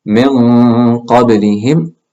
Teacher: So if you notice, when we said min qablihim, it sounded different than when we said man kafara. So min qablihim, the ghunna sounds deep.